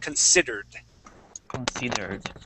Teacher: we wouldn't pronounce that e there okay we go from right from that R to that D sound